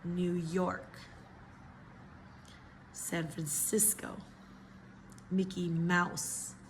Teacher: The stress is in the second syllable, in the second word